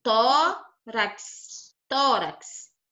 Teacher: o tom é a penúltima então como o tom é a penúltima ela é chamada de paroxítonas